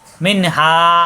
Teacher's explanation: নুন সাকিনের পরে হা স্পষ্ট হবে, গুণ্য হবে না